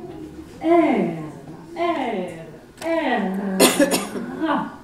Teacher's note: en portant le bout de la langue jusqu'au haut du palais, de sorte qu'étant frôlée par l'air qui sort avec force, elle y cède et revient toujours au même endroit, faisant une manière de tremblement